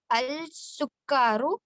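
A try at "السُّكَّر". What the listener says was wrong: السکر, اس کے اوپر تشدید آئے گی, وہ ہم سیکھیں گے کہ کیوں یہاں پہ تشدید آتی ہے, ٹھیک ہے نا.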